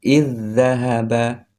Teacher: Cara membacanya antara i dengan dzal digabung. I langsung masuk ke huruf selanjutnya ke dzal di sini.